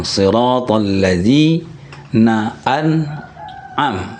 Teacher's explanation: kalau kita membaca an'amta itu ainnya adalah di tenggorokan